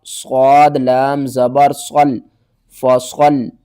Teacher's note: یہاں پر صاد کو آپ نے موٹا کر کے پڑھنا ہے